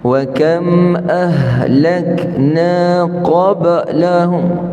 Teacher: qaf tebal, ba qalqalah. Cuma qalqalah yang nipis.